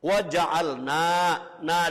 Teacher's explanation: Wa ja'alna, dibaca panjang, dibaca dawa, namanya mad asli atau mad tabi'i, panjangnya 1 alif atau 2 harokat. Harokatnya 2 ketukan, 2 gerakan tangan.